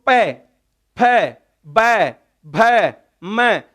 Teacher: सबके अंदर दोनों ओष्ठ टकरा रहे हैं। यदि एक भी ओष्ठ नहीं हो तो इनको नहीं बोला जा सकता। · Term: पवर्ग